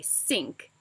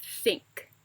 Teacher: The TH sound often comes out more like an S, leading non-native speakers to say sink instead of think.